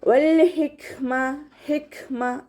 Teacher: തൊണ്ടയുടെ അവസാനത്തു നിന്നും പുറപ്പെടുന്ന ഹ എന്നുള്ള അക്ഷരത്തിൻ്റെ സൗണ്ടും ഹ എന്നുള്ള അക്ഷരത്തിൻ്റെ സൗണ്ടും ഒന്നാവാതെ നോക്കാം, ശ്രദ്ധിക്കുക. കാഫ് സുക്കൂനാവുന്ന സമയത്ത് കുറച്ച് എയർ പാസ് ചെയ്യുന്ന സൗണ്ട് കൊടുക്കുക